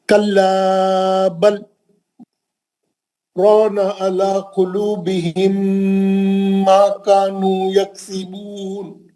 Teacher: تھوڑا بیچ میں پاس کرنا, تھوڑا معلوم ہونا کہ آپ بیچ میں تھوڑی دیر رکے بول کے. بہت اچھا پڑھا. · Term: گیپ